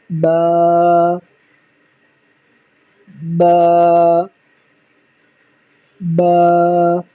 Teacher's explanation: با جو ہے دونوں ہونٹوں کے تر حصے سے ادا ہوتا ہے